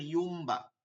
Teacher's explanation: নুন সাকিন তানভীনের পরে যখনই এভাবে বা দেখবেন সাথে সাথে এটাকে মিম করতে হবে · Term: ইকলাব